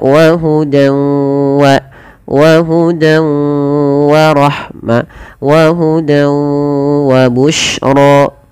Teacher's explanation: Idgam ghunah yang dia naqis tidak sempurna diidgamkannya. Masih menyelesaikan sedikit bunyi suara nun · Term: idgham bighunah, idgham bi gunnah